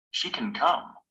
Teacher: when it comes before another word in the same clause, can is usually unstressed, and the vowel is reduced. The pronunciation is short and weak.